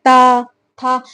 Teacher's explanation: दंत वर्ण है। जीभ की नोक दांतों को स्पर्श करती है।